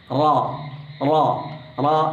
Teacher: റ എന്ന അക്ഷരം തഫ്ഹീമിന്റെ അക്ഷരം അതായത് ഘനപ്പിച്ച് ഉച്ചരിക്കേണ്ട അക്ഷരം ആയതുകൊണ്ട് വായ നല്ലപോലെ ക്ലോസ് ചെയ്തുകൊണ്ട് റ എന്ന് ഓപ്പൺ ആക്കി · നാവിൻറെ അറ്റം കുറച്ച് വളച്ചു വെച്ചുകൊണ്ട് മേലെ അണ്ണാക്കിൽ തൊടേണ്ടതുണ്ട്